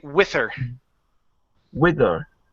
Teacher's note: dropping the H and connecting it to the word